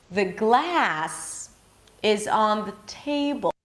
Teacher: So notice that I raised the pitch for glass and table. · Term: higher in pitch